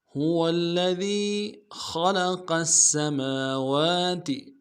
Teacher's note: هو الذي خلق السماوات، خا کو موٹا ادا کریں گے، لام کو نون سے ادا کریں گے، قاف کو موٹا ادا کرتے ہوئے سین کے ساتھ ملانا ہے